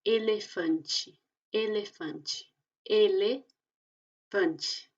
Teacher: Entonces ahí tenemos la palabra elefante y entonces ese L al principio se pronuncia como E, L, L. pero la E que está al final se pronuncia como una I.